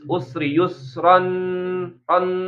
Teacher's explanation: Nun sukun punya sifat namanya bainiyah. Suaranya mengalir sedikit ya.